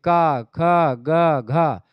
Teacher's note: कंठ से निकलती ध्वनियां तो ये कंठ ध्वनियां है